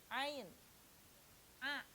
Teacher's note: Haknya huruf ain itu dibaca wastul halki, ya, dibaca wastul halki, pertengahan tenggorokan.